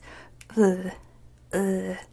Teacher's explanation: so it's an uh sound but with your throat with the glottal stop